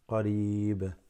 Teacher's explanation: The ya extends the ra slightly.